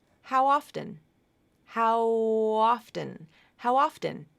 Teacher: it's connected together with no breaks uh your vocal cords continue to vibrate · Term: vowel to vowel linking